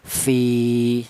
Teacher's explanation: Kalau tidak ada ya mati ini dibaca pendek V. Berhubung ini ada ya mati maka V ini harus dipanjangkan dua ketukan. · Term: mad thobi'i, matobi'i